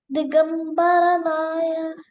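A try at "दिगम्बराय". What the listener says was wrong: Not Naya. Raya.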